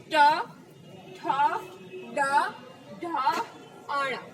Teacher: જો અમે તમે બોલશો તો તમારી જીભ વળશે. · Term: મૂર્ધા